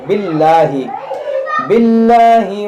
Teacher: इसमें जलाल से पहले ज़ेर है, इसको हम बारीक पढ़ेंगे